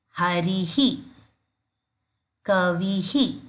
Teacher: visarga as well follows the previous vowel sound